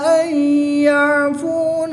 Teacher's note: نون ساکن کے بعد یا حروف ملون میں سے ہے تو یہاں پر ادغام مع الغنہ ہوگا